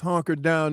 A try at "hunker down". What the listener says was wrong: please stop saying honker down, dude. You've done this. You don't honker down. You hunker down.